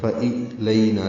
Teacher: نا الف مدہ 2 حرکات لمبا کریں گے